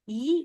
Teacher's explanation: I Nah itu mencenderungkan pangkal lidah menjadi e ke bawah J kalau kita bilang I gitu pangkal lidah tuh kayak ditekan harus ke bawah oke itu dulu teman-teman nah kemudian kita nih ada huruf nih